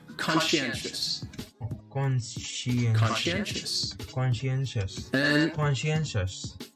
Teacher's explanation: the second syllable is what really confuses people because the sci almost sounds like you're saying she